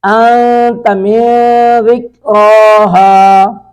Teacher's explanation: نون ساکن کے بعد تا ہے، یہاں پہ اخفا کریں گے